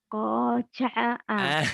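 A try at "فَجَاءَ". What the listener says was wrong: Titiknya satu ya. Bukan kok Fa. Faza'a.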